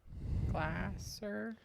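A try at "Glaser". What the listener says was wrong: No, he says long A. Long A means A and not A. You said gla, that would be not even long A.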